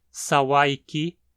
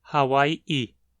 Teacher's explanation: Tanto o S debucalizou para um H, quanto o K debucalizou para uma parada glotal.